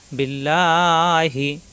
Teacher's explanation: আলা শব্দের ডানে জবর পেশ আসে নাই আসছে জের এজন্য লা হবে ল হবে না